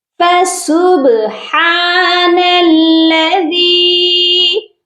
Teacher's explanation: با جو ہے سائلنٹ ہے، اسی لیے ہم یہاں پر اس پر قلقلہ کریں گے · دال کو ہم ایک الف کی مقدار لمبا کریں گے کیونکہ اس کے ساتھ یا مدہ ہے